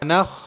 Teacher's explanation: خا اخیر حلق سے ادا ہوتا ہے۔ تجوید کے اندر یہ ہے شروع حلق، یہ ہے بیچ حلق اور یہ ہے آخر حلق، تو آخر حلق سے ادا ہوتا ہے خا۔